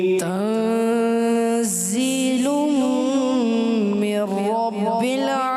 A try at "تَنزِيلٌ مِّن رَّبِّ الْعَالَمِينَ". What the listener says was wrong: دو غلط, دو غلطیاں. ایک تو ذا کو آپ نے ایسے سختی سے پڑھا, سختی سے نہیں پڑھتے, یہ نرمی والے حروف ہیں.